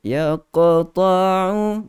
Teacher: Qalqalah yang sughra, yang kecil, lantunan yang lembut.